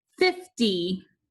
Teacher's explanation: we're not going to add a brevi or a macron but the first syllable is accented